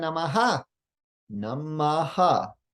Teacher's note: when the visarga falls at the end of a line it gets two syllables there is an aspiration of the preceding vowel sound